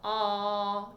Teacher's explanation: And he generally will ask you to make the sound ah, and you can feel ah, your tongue drops down and back. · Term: low tongue